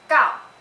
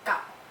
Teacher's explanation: second tone starts from the top and goes down. Third tone starts from the middle and goes down. Second tone sounds like gao, and then the third tone sounds like gao.